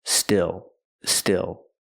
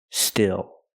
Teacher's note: Use the short I like this is. It's a more open sound.